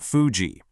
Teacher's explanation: In English, we press our top teeth against our bottom lip. But the Japanese sound is made just by blowing air through your lips.